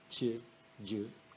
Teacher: ce sont des consonnes palatales, mouillées